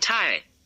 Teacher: an aspirated alveolar plosive, T, in tie